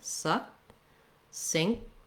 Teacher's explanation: the K and the T both get stopped and the T kind of drops as a result. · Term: stopped K